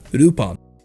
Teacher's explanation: we were to romanize what his name sounds like in japanese we would have to take out the l and pronounce the name as rupan al phonetically speaking doesn't exist in the japanese language therefore his